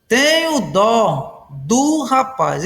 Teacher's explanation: dó, substantivo, é tônico, e do, contração da preposição de com o artigo o, é átono